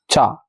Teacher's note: चा किससे बोला जाता है? तालु से